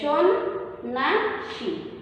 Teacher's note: শব্দের প্রথমে দন্তস্ব আছে, কিন্তু আমরা উচ্চারণে কি বলছি তালব্যস্য, কারণ ইংরেজি এস এইচ এর মতো উচ্চারিত হচ্ছে